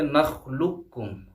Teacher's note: مثلا نخلقکم، آپ دیکھیں نخلقکم دراصل میں تھا نخلقکم، لام کے بعد قاف ہے پھر اس کے بعد کاف ہے، قاف اور کاف دونوں قریب المخرج ہے یعنی ان کا مخرج نزدیک ہے، ایک جیسا نہیں ہے بلکہ نزدیک ہے، تو یہاں پہ بھی ادغام ہوگا، ایسے کہ پہلا جو ساکن ہے اسے ہم جو ہے حذف کر دیں گے اور دوسرا جو متحرک ہے اسے پڑھا جائے گا۔ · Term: ادغام متقاربین